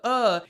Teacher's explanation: uh is the sound of the voice at rest